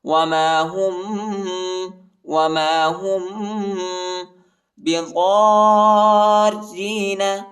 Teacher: میم ساکن کے بعد جو ہے با آیا ہے، ادھر ہم اخفا کریں گے